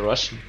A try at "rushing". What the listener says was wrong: Oh, it sounds like you're saying Russian.